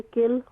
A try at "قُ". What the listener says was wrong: قل، قل نہیں ہوگا، قاف موٹا قاف ہے تو قل ہوگا